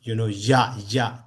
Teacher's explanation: when we pronounce ya, that is coming from the palate